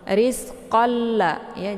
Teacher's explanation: Jadi memasukkan dengan tiada berdengung. Jadi cara bacanya itu cukup ditekan saja langsung dileburkan suaranya ke dalam huruf la. Rizqalla ya, jangan dibaca rizqan lakum. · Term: idgham bila gunnah